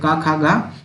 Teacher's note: क ख ग ये सभी के सभी कंठ होते हैं कंठ से बोले जाते हैं